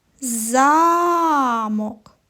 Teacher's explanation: цей звук говориться з більшою силою і довготою і він називається наголошеним